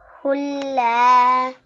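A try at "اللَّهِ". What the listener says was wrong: Okay, try not to prolong it for too long, just prolong the la here for 1 second only.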